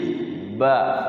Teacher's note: Ba Itu huruf bibir ba ya Harus dua bibir Ya kalau satu bibir enggak bisa Ba ini adalah jahr jahr